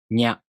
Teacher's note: To pronounce Nya, you first make the tongue position of the [ɲ] consonant. Then, the tongue moves into position for the [a] vowel.